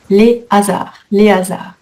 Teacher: Par contre hasard c'est un H aspiré. Liaison interdite.